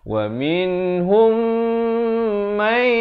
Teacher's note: Manakala idgham mislain saghir ini, mim bertemu mim, didengungkan dua harakat. Ramai yang tersilap di sini, dia tak panjangkan.